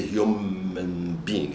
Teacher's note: The N and the B must become similar. So the B is bilabial and the N is nasal. So to be kind, please give us a bilabial nasal, which is M, to make things close. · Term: assimilation